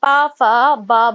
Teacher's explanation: प वर्ग के जो होते हैं प फ ब भ ये हमारे ओष्ठ व्यंजन होते हैं